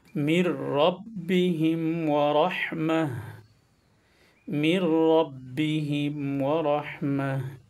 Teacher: এই তাটা শেষে যখন ওয়াকফ করবেন তখন হা হয়ে যায়।